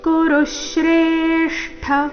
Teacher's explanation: ಋ ಮತ್ತೆ ಶ್ರೇ ಮೇಲೆ ಆಘಾತ